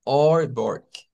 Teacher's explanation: es una especie de A, pero es una A que suena como o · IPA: /ɑ/